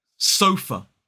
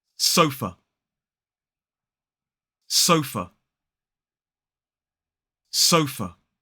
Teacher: 2 syllables, stress on the first, it's so and f.